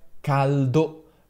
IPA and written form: ˈkaldo (caldo)